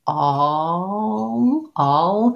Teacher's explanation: the vowel shape like the ah is very similar to the dark l shape